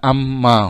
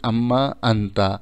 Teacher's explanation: چونکہ لتقاربہما، یہ قریب المخرج ہیں، اس لیے پہلے نون کو میم میں بدل دیا اور میم کو میم میں ادغام کر دیا